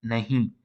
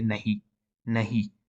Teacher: usually it is nasalized in careful pronunciation but sometimes they just say nahi so you can say you